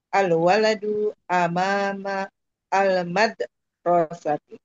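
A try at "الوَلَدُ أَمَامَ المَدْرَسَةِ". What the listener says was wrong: Lagi-lagi, roknya lagi kepanjangan. Iya, Al-Madrasati.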